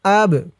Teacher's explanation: এই বাটা কলকলার হরফ ধাক্কা দিয়ে পড়তে হবে।